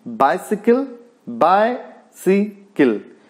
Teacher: बाइसिकल, बायसिकल, first stressed and next 2 unstressed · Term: डेक्टिलिक